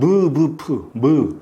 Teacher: 입술을 움직이지 않으면 안 됩니다. 즉 입술의 소리가 납니다. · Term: 입술 소리